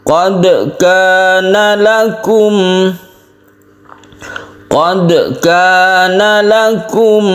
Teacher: Sughra artinya kecil, qalqalah artinya memantul. Huruf dal ini kita pantulkan secara otomatis tanpa membentuk suara baru dari dal tersebut. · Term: qalqalah sughra